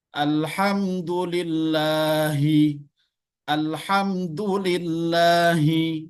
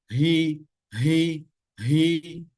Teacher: Jadi ha itu tidak keluar dari dada, tapi dia keluar dari bagian bawah tenggorokan kita. Hamzah ha. Jadi dia agak terasa lebih berat.